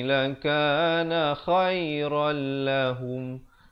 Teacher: Di sini asalnya khairan jadi khairal, terus masuk tanpa dengung.